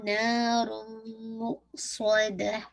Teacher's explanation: sure कीजिएगा तन्वीन के बाद आप देखिए मीम आ रहा है, इदगाम कामिल होगा लेकिन विद मोस्ट कंप्लीट गुन्ना जो कि अकमल गुन्ना है